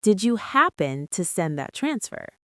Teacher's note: Notice the intonation again. It stays high and light.